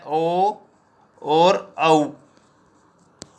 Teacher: कंठ और ओष्ठ, इसमें इसका जो वर्ण आते हैं इसमें वो आता है ओ और औ, ठीक है। ओ और औ वर्ण आते हैं वो कंठोष्ठ होते हैं, ठीक है। अब कंठोष्ठ कैसे होते हैं, जैसे ओ बनता है ए प्लस उ, ठीक है।